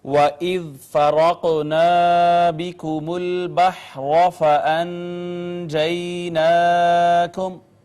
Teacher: سب سے پہلے واو ہونٹ گول کر کے ادا کی، اس کے بعد ذال کو نرمی سے پڑھا، را کو پر کر کے پڑھا، قاف حروف قلقلہ میں سے ہم نے قلقلہ کیا، یہ الف مدہ تھا، را مفتوح ہے لہٰذا اس کو ہم نے پر کر کے پڑھا۔